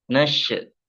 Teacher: Tapi ngalir, tapi tidak boleh terpantul ya. Ada penahanan di sana sedikit dikarenakan huruf sin itu huruf at-tafashi ya, keluar desisan keluar gitu. Tapi tidak boleh terpantul, harus ngalir. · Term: huruf shin